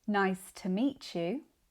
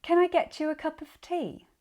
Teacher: when T comes before a U sound, it can become the ch sound in words and in connected speech